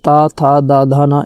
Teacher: ता, था, दा, धा, ना, इन सभी का उच्चारण जो है दंत से होता है